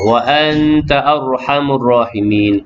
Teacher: Nun mati bertemu dengan ta, ikhfa hakiki dengan sekadar dua harakat.